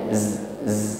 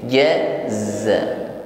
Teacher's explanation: hilang mengucapkan Zaid sifat safirnya z z ya desis ini jaza Jangan diucapkan ja ja seperti Huruf Jim sehingga safir atau desisnya hilang